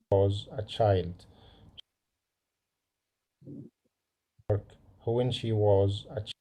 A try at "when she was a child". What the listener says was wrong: Who when ولا when؟ when بتنقطع when، مش who when. when بتنقطع when، ال H is silent totally. عشان تقول who when، هو طلع هوا صح؟ هو when. انا محتاج الهوا ده في البي مش في ال H. محتاج بقى الهوا ده في البي. اوكي، يبقى انا اقول هنا when.